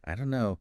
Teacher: the don't and no just merge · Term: linking